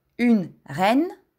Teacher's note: Une reine изговаряме отворено Е в думата.